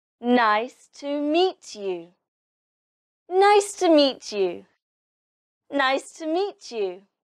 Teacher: In this sentence, the stress is on nice and meet. So you say these words louder and higher than the others.